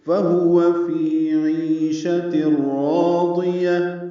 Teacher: فی یا مدہ ہے 2 حرکات لمبا ہے